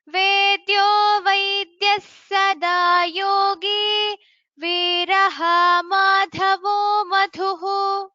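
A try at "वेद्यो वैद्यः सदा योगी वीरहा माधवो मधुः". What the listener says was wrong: there I don't hear the stress on the sakara there. Vaidyas Sada Yogi. Vedyo Vaidyas Sada Yogi Viraha Madhavo Madhuhu.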